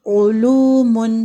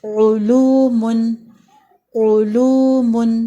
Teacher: عین پیش او، علوم، او ہے پھر لو ہے، واو ساکن سے پہلے پیش ہے، یہ مد اصلی ہے اور اس کو 2 حرکات تک لمبا کریں گے